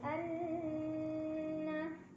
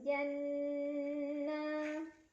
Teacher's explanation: Salihati anna ada gunnah musyaddadah karena ada nun yang bertasydid. Cara bacanya didengungkan, ditahan kurang lebih dua harokat.